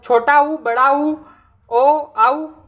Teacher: तो जिह्वा का पिछला भाग सक्रिय रहता है, उन्हें पश्च स्वर कहते हैं